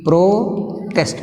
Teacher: దీన్ని మనం వెర్బుగా వాడినాం అనుకో. Now the stress is shifted to the second syllable.